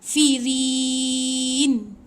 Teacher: Kita boleh baca panjang. Firin tu kita boleh ambil 2 harakat boleh panjang. Firin. 2 harakat ataupun 4 harakat. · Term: mat arid li sukun